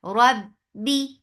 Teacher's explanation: ba will get sifa of shidda, and shidda is no flow of sound whatsoever. Rabbi for kasra give e sound.